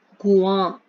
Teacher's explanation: अनुनासिक का स्वर नाक और कंठ अर्थात मुख दोनों से निकलता है।